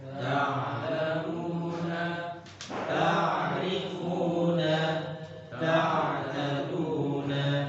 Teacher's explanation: Huruf ain nanti adalah pertengahan. Jadi suaranya antara mengalir dan tertahan.